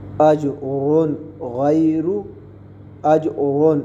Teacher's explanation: ہم نے را کی 2 پیش کے ساؤنڈ کو ظاہر کر کے پڑھے, غنہ نہیں کیا کیونکہ غین حروف ہلکی میں سے. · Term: اظہار